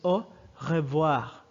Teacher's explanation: notice that the r vibrates in the throat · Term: french r